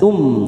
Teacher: mim sukun bertemu ta Idhar syafawi kita baca jelas